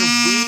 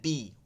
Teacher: উই হচ্ছে ঠোঁট বড় করে, বি হচ্ছে ঠোঁটটা হচ্ছে ই করে, চ্যাপ্টা করে